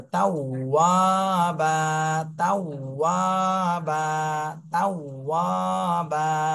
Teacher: ওয়াও বলার সময় ঠোঁটটা একদম গোল হয়ে যাবে, তাওয়াবা, তাওয়াবা, তাওয়াবা।